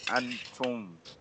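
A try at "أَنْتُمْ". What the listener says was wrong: Good, this time correct. Read again.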